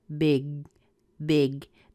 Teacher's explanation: touch the back of your tongue on the back of your palate for the big big don't let a lot of air escape immediately put your